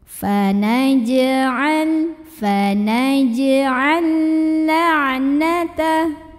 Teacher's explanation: Maka ini sama halnya seperti huruf ba, kita pantulkan dengan pantulan yang kecil dan tetap dialirkan pantulannya ya. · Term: qalqalah sughra